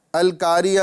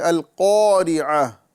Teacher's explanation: یہاں قوف اور یہاں بھی قوف جو آ رہا ہے، یہاں قوف کی جگہ کاف نہیں پڑھنا ہے